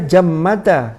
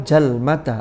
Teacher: Lalu ada perubahan sehingga dari jammada mim yang pertama berubah menjadi jalmada. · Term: mukhalafah